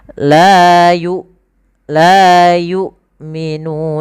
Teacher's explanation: huruf hamzah merupakan huruf yang kita keluarkan daripada tenggorokan kita ya karena dia makhrajuhu alhq yaitu tempat keluarnya adalah eh tenggorokan